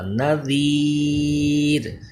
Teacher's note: را جب وقف کی حالت میں ہوگا تو را ساکن ہو جائے گا، اس سے پہلے یا ساکن ہے اس لیے یہ باریک ہوگا